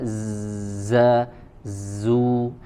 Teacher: huruf Zai Perhatikan ya Ee mirip-mirip dengan huruf z ya Ee maka harus jelas desisannya ya sifat safir yang dimiliki oleh huruf Zai ya tajam suaranya